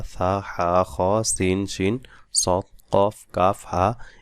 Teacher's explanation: এ হরফগুলো আস্তে আওয়াজে পড়তে হবে এবং শ্বাস জারি রাখতে হবে। তা বলার সময় বা কোন হরফ বলার সময় যেন এ হরফের আওয়াজ বন্ধ না হয়ে যায়। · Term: হামস